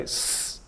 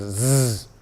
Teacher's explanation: Let's say s is voiceless and z is the same sound voiced.